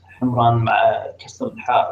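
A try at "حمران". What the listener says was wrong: Himran, I think it's with a dhamma, wallahu alam.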